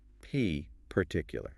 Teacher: Notice how the P pops at the front of the mouth.